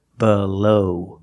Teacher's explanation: the short uh sound uh like cup and up B below the second vowel is a long o like no and go together below baloney the last vowel is a long e like